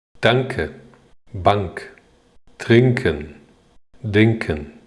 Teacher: nk▁也是一个组合，▁ng▁的鼻音再加上一个▁k。